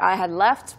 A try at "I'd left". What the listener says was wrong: 네, 화면 보시면은 마지막 부분에 right after I had가 있는데 들리긴 들려요. 있긴 있는데 이 네이튼 씨가 이야기할 때 I had left 이렇게 발음하지는 않았고요. I'd left. 네, 이렇게 이야기를 했죠.